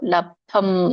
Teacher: ಅಲ್ಲಿ ಬ ದೊಡ್ಡದು ಕೇಳಿಸ್ಬಾರ್ದು, ಧ ಮಾತ್ರ ಮಹಾಪ್ರಾಣ ಕೇಳಿಸ್ಬೇಕು